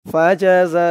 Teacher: জা এখানে 4 আলিফ টান হবে, মধ্যে মুত্তাসিল